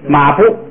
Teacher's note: 行的低声送气的，变成高声不送气。先按这个字母元音读啊，马步，哎， 第二个变成高声跟不送气